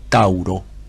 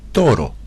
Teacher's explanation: la combinación de vocales A-U que encontramos en la palabra Tauro, esa combinación de vocales terminó fusionándose, convirtiéndose en una sola vocal, la vocal O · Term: principio de economía